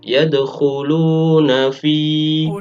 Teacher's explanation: Pada lafadz fi, fa-nya harus dibaca panjang 1 alif atau 2 harokat. Ini juga masuk bacaan mad tabi'i karena ada fa-nya berharokat kasro, kemudian diikuti ya mati.